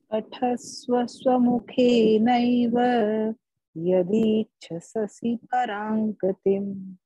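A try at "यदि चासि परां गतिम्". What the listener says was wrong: Yadi chasasi, yeah, doing two, right? So do only one. Yadi chasi.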